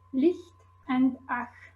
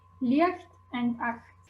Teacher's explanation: that we don't have the distinction between [ç] and [x], so we don't distinguish the palatal and velar fricatives